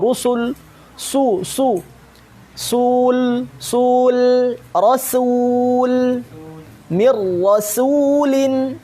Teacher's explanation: itu harus tipis sinnya, lamnya juga tipis